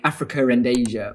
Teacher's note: people will insert an R as a way of avoiding the vowels being together